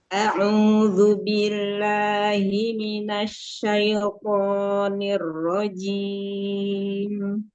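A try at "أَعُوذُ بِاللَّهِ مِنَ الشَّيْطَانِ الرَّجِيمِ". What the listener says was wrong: Huruf ainnya dari tengah tenggorokan lagi, terus monyongin lagi. A'udzu. Huruf hamzah di awalnya ringanin lagi. A'udzu. A'udzu.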